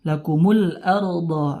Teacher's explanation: Ra di sini ra tafkhim ya, tebal.